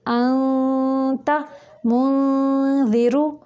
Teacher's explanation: انت اس کو جو زبان کی نوک ہے اس کو اوپر والے تالو سے نہیں لگانا، پیچھے رکھ کے اس کو ادا کرنا ہے، یعنی آواز کو، نون کی آواز کو چھپا کے ناک سے نکالنا ہے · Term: اخفاء